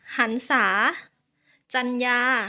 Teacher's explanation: แทนเสียงสระอะตามด้วยเสียงตัวสะกดแม่กนค่ะ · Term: รอหัน